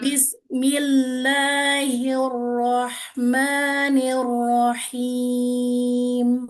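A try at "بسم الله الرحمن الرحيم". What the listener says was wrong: Tinggal di kata Bismillah. Tadi sinnya masih keputus. terputus. Berarti langsung ke mim.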